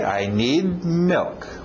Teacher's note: Engole aquele D no final